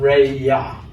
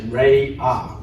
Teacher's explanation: We don't pronounce the ya with the y sound.